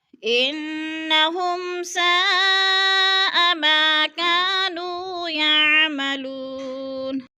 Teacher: مد متصل 4 الفی مد ہے، ہم نے اس کو 4 حرکات کے برابر لمبا کر کے پڑھنا ہے